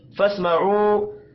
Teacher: واو مدہ ہے، 1 الف کے برابر کھینچ کر پڑھیں گے.